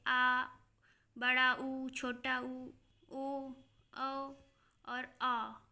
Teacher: अग्र स्वर जो हमारे मुंह के आगे से जब वो आवाज़ निकले वो हमारे अग्र स्वर हैं, जैसे ई ए। पश्च स्वर जो हमारे मुंह के पीछे से आवाज़ निकले, गले के पास से, आ, बड़ा ऊ, छोटा ऊ, ओ औ और आ।